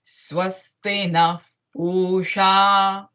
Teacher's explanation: So pu, you need to give that balam, that stress while chanting pusha.